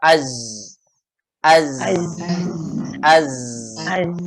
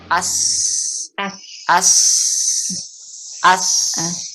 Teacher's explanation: nih z sama Sin ya Maknya i yang membedakan adalah sifatnya kalau sifat pada Zai dia sifatnya adalah jahr enggak sampai keluar kalau sin dia sifatnya hams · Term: jahar